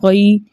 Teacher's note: یا ساکن سے پہلے کسی بھی حرف کے اوپر زبر اور ایسی یا لین کہلاتی ہے. یا لین کو 1.5 حرکت کی دیر لگا کے نرمی اور سہولت کے ساتھ پڑھتے ہیں